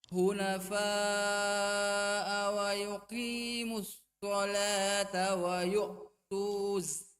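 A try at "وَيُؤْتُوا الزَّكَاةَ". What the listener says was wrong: Nah, ini pendek langsung tuzzaka. Jadi waw di sini ini tidak terbaca ya. bertemunya dua sukun. Waw sukun dengan lam sukun. Sehingga waw itu dihapus. Menjadi langsung wa yu'tuz. Nah, jangan wa yu'tuz. Tapi langsung pendek saja.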